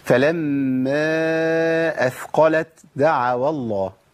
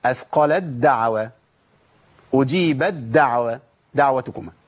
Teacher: ما أقولش فلما أثقلت دعوا الله، ما أعملش القوة ديت والشدة ديت، أنا بشيل التاء وأبدلها بدال وما أقولش فلما أثقلت دعوا الله، لا أنا كده جبت همس، يعني جبت تاء وأنا ما عنديش تاء هنا، التاء أضغمت ذهبت بالكلية وأبدلت بحرف الدال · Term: إدغام تاء في دال